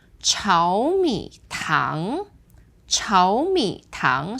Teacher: So that becomes 2, 3, 2. So because tang here is only the second tone, you are left with 2 third tones. So this is the normal third tone rule and it's 炒米.